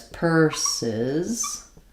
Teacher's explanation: the first letter S is going to be the S sound. The second letter S is going to be the Z sound. So I will write it as purses, with this being long and this being short.